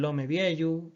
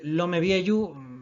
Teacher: estaríamos hablando de la pérdida de un sonido, de un fonema concreto, cuando se juntan dos palabras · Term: apostrofación